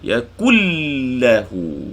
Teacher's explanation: Nun sakinah bertemu lam, idgham bila gunnah, tak ada dengung sini. · Yakullahu, hu dua harakat, maksilah qasirah.